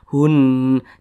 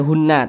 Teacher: Jangan dibaca hunna, tapi dimatikan huruf nunnya dimatikan. Hunna seperti itu.